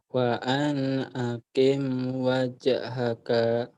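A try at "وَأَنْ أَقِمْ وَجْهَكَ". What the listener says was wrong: Pendek. Wa an aqim wajhaka. Pendek.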